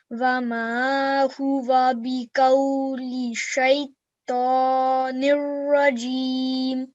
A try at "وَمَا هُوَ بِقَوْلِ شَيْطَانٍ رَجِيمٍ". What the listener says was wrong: You're doing everything right, but you're not spending long enough on this ya leen. Okay, so how many seconds do you need to spend here? 2 seconds, yes.